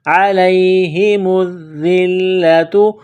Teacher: عین کو گلے سے نکالیں گے